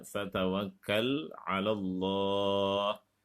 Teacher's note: lemnya dibaca tafkhim karena sebelum lafadz Allah ada huruf berharokat fathah